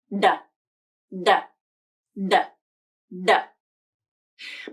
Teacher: It has the same tongue placement and the same voicing, but the airflow is different. The D sound is a stop consonant, which means the airflow is completely stopped. Air pressure builds up behind the stop point, and then the airflow is released.